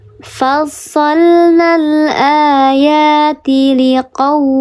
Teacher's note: Ada huruf waw sukun, sebelumnya harokatnya fathah, dibacanya dia dilembutkan 2 harokat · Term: harfulin